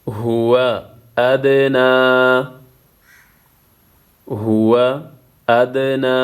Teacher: یہاں پہ دال ساکن ہے قلقلہ ہوگا نون کے اوپر کڑا زبر ہے ایک الف کے مقدار کھینچنا